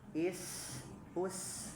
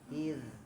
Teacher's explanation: Jadi za sama sa bedanya itu di hamas dan jahar. Kalau sa mah hamas, kalau zal mah jahar.